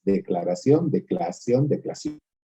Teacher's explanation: En vez de tergiversación, se pierde la R, o ese declaración, donde la R se cae, y entonces lo que hacen es unirse las dos vocales